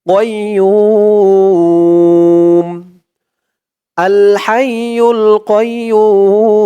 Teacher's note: পেশের পরে ওয়াও সাকিন এক আলিফ টানটা তিন আলিফ টান হয়ে যাবে